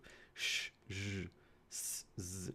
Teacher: Turbulent airflow, meaning there's this very, very, very narrow passage that air can continuously flow through. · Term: fricatives